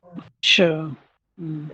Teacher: ये वाला श मूर्धन्य होता है ना, इसीलिए उसको मूर्धन्य बोलते हैं, क्योंकि मूर्धा से बोला जाता है।